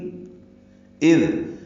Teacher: حمزہ اقصی حلق سے ادا کریں گے، دال سے ملائیں گے، دال کو نرمی سے ادا کریں گے.